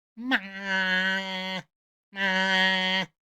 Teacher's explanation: the first tone, if you look in your textbook, is going to say a 5, 5, 5, 5 level way up here. Ma, ma. But I will tell you right away, Chinese people don't go way up to 5 when they're speaking Chinese.